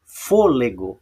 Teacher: vejam que o for eu falo mais alto do que o lê e o gó. · a sílaba tônica da palavra fôlego não é o gó, não é a última, nem a penúltima, ela é a antepenúltima